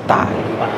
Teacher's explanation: Ya, ta ini ujung lidah, dasarnya tuh ujung lidah, tapi jika kita sempurnakan ujung lidah yang dilengketkan kepada dua pangkal gigi depan atas. Ta. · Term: huruf ta